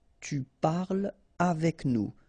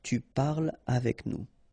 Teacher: So no liaison here between parle and avec